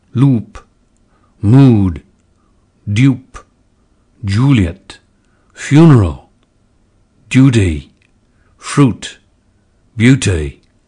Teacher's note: Crystal cautions us to retain the lip rounding of conservative RP, oo, in the goose lexical set